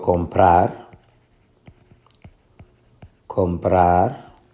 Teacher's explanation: la fuerza de pronunciación en la última sílaba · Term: palabra aguda